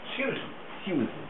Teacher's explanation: it's as though it's a diphthong. It's as though there's an I before the U. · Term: the posh way